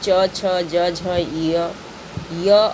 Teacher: च छ ज झ य और तालव्य स तालु से किया जाता है